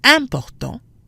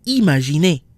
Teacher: Important, nasal, versus imaginer, not nasal. Again, this has to do with where the letters fall when the words are broken into syllables.